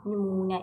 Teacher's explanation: uzanma, nümunə ikidədir. Vurğu isə üçüncü hecəyə düşmüş olur.